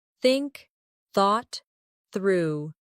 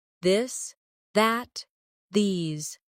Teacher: For example, the th sound in think or this. Put your tongue between your teeth and push air out for think. For this, your tongue touches the same position but with your voice turned on.